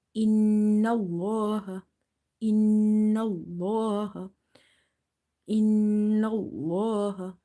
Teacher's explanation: if you see shadda on noon, you will do the nasalization, gunna.